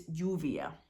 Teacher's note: the Double L and how that makes a y sound or a sh sound depending on kind of where you are in the world